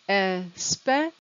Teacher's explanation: the c i a is the sound sh · CI can sometimes be sh, but the A we don't pronounce.